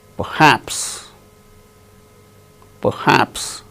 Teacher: R is not uttered because it is followed by h in the word perhaps.